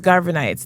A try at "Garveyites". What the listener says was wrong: Garveyites. Garveyites. Say it right. Don't Garvin. Garveyites.